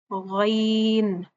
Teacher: अपनी जुबान का जो पिछला हिस्सा है उसको ऊपर की तरफ बुलंद करते हैं। यह हुरूफ मुस्तालिया में से है।